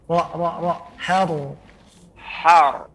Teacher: huruf ra ditebalkan dengan cara di ujung lidah nempel ke gusi